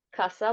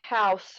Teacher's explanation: how language change has turned a /k/ into a /h/ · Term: sound change